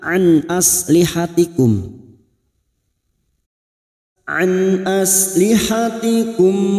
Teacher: Ain nun sukun bertemu Hamzah nun sukun bertemu hamzaah Idhar halq nun sukun dibaca jelas tanpa mendengung